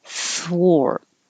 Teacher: We don't see it very often, but you don't round your lips for the TH, but you do round them for the W. So start unrounded and then round.